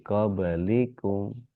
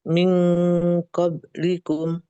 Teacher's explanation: Qablikum itu huruf yang qalqalah itu punya kadar yang sama dengan huruf yang berharokat. Jadi jangan dihentak qob gitu, tapi qablikum.